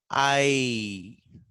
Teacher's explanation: From the position of A, your tongue slightly, slowly glides towards E. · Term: diphthong